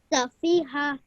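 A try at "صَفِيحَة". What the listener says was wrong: Just remember your last letter, you're prolonging it slightly longer than it should be. Safiha.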